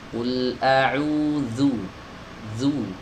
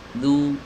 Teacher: dzal adalah huruf yang keluar dari ujung lidah, bertemu dengan ujung-ujung gigi seri atas. Ya, dan digesekkan. Ya, digesekkan dengan tekanan yang sedang saja, ya, nggak boleh terlalu kuat, nggak boleh juga lemah sekali sampai dia itu nggak ada gesekan. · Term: huruf dzal